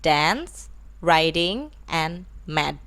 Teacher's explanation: D, which is voiced, alveolar, stop